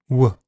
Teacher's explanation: W Air is allowed to flow throughout making the consonant vowelike. W the vocal folds vibrate constantly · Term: voiced labial va approximate